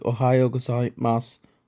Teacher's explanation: If you listen carefully to ohayo gozaimasu, you'll notice that it sounds almost like ohayo gozaimasu with no final U sound. This is a so-called whispered vowel because it's almost as if the speaker is pronouncing that final su ever so softly.